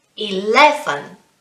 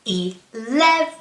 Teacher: don't forget it's the second syllable which is stressed